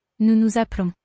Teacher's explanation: the S on the end of the first nous is silent, but the second one is heard.